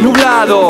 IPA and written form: nuβ´laðo (nublado)